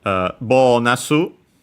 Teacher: But yeah, here we have bonus, which in Japanese becomes bonasu. Should be bonasu with a longer O